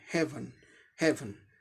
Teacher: से हे एक सिलेबल हो गया, वन दूसरा सिलेबल हो गया, दूसरे सिलेबल में सिर्फ कॉन्सोनेंट साउंड है, इसीलिए इसे सिलेबिक कॉन्सोनेंट कहते हैं , ये एक्सेप्शनल है, बिना वावल के भी सिलेबल बन गया